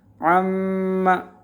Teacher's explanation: یہ عن جو ہے، عن کا معنی کے بارے میں، اباؤٹ، انگلش میں جو آتا اباؤٹ، یہاں بھی اسی طرح کا عن یہاں تھا، عن ما، اس نون کو میم بنایا تو میم کو میم کے ادغام کیا، عما ہو گیا